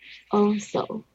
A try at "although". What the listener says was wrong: Although. Although. Yeah, it's like you have to emphasize the th word or the th sound. Although.